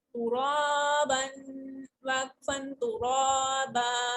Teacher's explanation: را کو بولڈ کریں گے اور ون فنگر اسٹریچ کریں گے. وقفن کی صورت میں ہم ڈبل فتح کو ون فتح پڑھیں گے، یعنی ڈبل زبر کو ہم ایک زبر اور اسٹریچ کر کے پڑھیں گے.